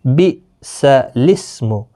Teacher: بِئْسَ الِاسْمُ، سورۃ الحجرات میں ہے بِئْسَ الِاسْمُ، تو یہاں پر جو یہ الف ہے یہ نہیں پڑھا جائے گا، لام کے نیچے زیر ہے بِئْسَ الِاسْمُ، حمزہ ساکن جھٹکے کے ساتھ پڑھیں گے